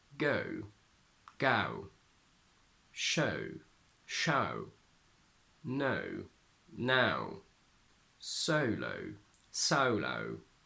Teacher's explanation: The diphthong O, O, O turns into something like ow, ow, ow.